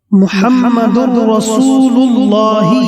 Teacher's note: محمد رسول اللہ، محمد میں جو دال پر تنوین ہے، اس تنوین میں نون ساکن ہے جو مدغم ہے، اور رسول اللہ میں جو را ہے وہ مدغم فی ہے، لہذا تنوین کا را میں ادغام کر دیں گے اور یہ ادغام متقاربین ہوگا، کیونکہ نون اور را کا مخرج قریب قریب ہے